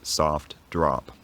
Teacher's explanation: many people from the middle of the US pronounced words like soft and drop with this unrounded vowel. So instead of being soft drop or soft drop, it was more like soft drop.